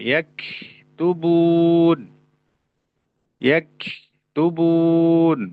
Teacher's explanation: terlalu memanjangkan sifat rokhawah yang ada dalam huruf kaf